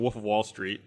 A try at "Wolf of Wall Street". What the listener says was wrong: There's a word he pronounces wrong. He says woof and not wolf. You say woof. You do say woof. You say woof of Wall